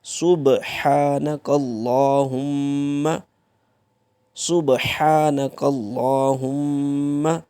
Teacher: سبحانک اللہم، یہاں پہ دیکھیں تو با کے اوپر آپ کی جزم ہے۔ جب بھی با ساکن ہوتی ہے تو وہ یہ حروف قلقلہ میں سے ہے، تو یہاں پہ قلقلہ ہوگا۔ قلقلہ کا مطلب یہ ہے کہ آپ کا آواز پلٹ کے آئے گی۔